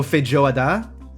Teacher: Or maybe it's the emphasis. The emphasis is on the last syllable.